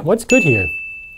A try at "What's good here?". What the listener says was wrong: A little faster.